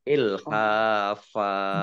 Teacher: Fathah tanwin alif kalau wakof atau kalau berhenti maka dibaca fathah dan panjang 2 harokat.